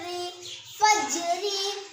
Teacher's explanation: ज़ेर की हरकत को मारूफ पढ़े और मजहूल आवाज़ से बचे, थोड़ा भी ना खींचे।